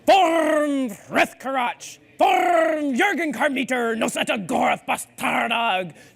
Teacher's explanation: in Dwarvish, you are supposed to roll your R's by wiggling your uvula.